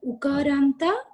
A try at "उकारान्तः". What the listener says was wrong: Ukarantaha only you should say, not Ukaranta.